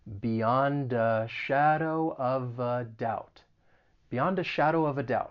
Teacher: we can do some linking and link some consonants with that schwa sound